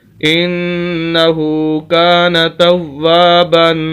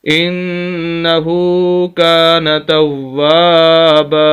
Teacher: وقف کی وجہ سے صرف 1 زبر باقی رہے گی، تو اس وجہ سے با کو پھر لمبا کر کے بھی پڑھیں گے۔ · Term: الف مدہ